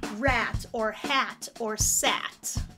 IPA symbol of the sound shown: æ